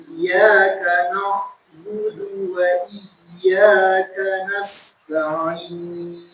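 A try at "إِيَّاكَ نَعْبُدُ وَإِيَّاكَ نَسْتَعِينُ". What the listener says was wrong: Nah, satu lagi Anda lupa nyampein. Nadanya harus ada naiknya sedikit. Sama wa iyyaka nasta'innya ada naik sedikit. Biar seakan-akan ini adalah terpisah antara ka dan na. Terpisah. Maka kalau misalnya kita datar nih, iyyaka na'budu wa iyyaka nasta'in. Itu seperti ka nasta'innya gini. Ka nasta'in. Nyambung. Maka di situ agak dinaikkan.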